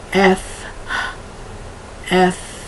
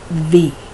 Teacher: one is aspirated f f and one is non aspirated V there's no air that comes out